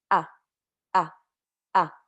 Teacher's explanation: you kind of have to give it a little pause in the beginning and then break your voice into sound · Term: Hamza